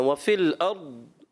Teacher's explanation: ارض اس کا مخرج ایسا ہے کہ جب وہاں سے زبان ہٹتی ہے تو ایسے لگے گا کہ جیسے کلکلا ہوا، کرنا نہیں ہے۔